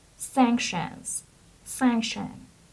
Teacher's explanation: So the stress is on the first syllable, and it's sanctions.